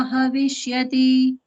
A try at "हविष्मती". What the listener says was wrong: Havismati. Havishmati, ma H-A. Havishmati, you said Havishyati. It is Havishmati.